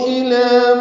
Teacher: اِلَى میں لام پر کھڑا زبر ہے، 2 حرکات لمبا کریں گے